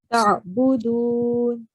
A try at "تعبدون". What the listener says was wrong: You don't have to make a jerk sound. This is, remember, this is letter Ain.